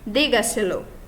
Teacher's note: O acento tônico se encontra na quarta sílaba a contar de la última. Então, no caso, ele é uma sílaba mais forte depois da antepenúltima sílaba, depois da esdrúxula, digamos assim.